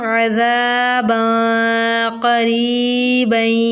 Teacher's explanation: 2 زبر کی تنوین کے بعد قاف جو ہے حروف اخفا میں سے ہے تو یہاں ہم غنہ کریں گے۔